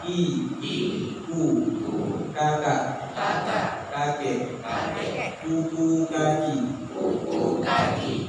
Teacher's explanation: langit-langitnya antara langit-langit yang lembut dengan yang keras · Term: huruf Kaf